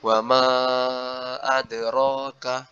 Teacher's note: Huruf qalqalahnya itu dilembutkan sedikit lagi karena dia terletak di tengah kata, jadi tidak sampai pantulannya keras, ya cukup memantul sewajarnya.